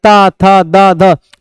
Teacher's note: आपकी जीभ दांतों से आगे टकरा रही होगी। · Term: तावर्ग